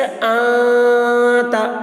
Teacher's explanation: آواز کو ناک میں چھپا رہے ہیں، نون کی آواز کو۔ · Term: اخفا